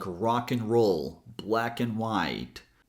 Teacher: We usually pronounce it as N, like rock and roll, black and white. We usually pronounce it as end if we're thinking.